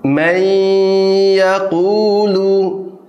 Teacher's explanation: bagaimana nun sukun dileburkan ke huruf berikutnya seolah-olah nunnya tidak ada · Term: idgham bi gunnah